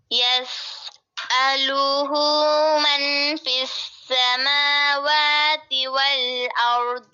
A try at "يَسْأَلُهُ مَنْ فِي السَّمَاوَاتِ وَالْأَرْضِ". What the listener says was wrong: آپ نے نا من نون ساکن کے بعد کون سا حرف ہے؟ حروف ہلکی ہے؟ نہیں ہے. لام اور را بھی نہیں ہے تو غنہ نہیں کیا. اور دوسرا اس کا ہوتا ہے اخفا، تو غنہ بھی کریں.